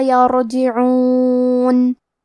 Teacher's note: کلمت یرجعون میں حرف الرا پہ جزم ہے، یہاں را کا حکم ہے تفخیم، تو ہم را کو موٹی آواز میں پڑھیں گے. عین کے ادائیگی حلق کے درمیان والے حصے سے ہے.